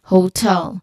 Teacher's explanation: just tell uh it has a short e sound as in bed and there's of course a clear l sound there. Then the crucial aspect here is also the stress which falls on the second syllable